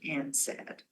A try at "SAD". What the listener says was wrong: have to read it as an SAD, not and sad.